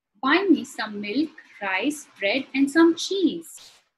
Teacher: my intonation Rises towards the end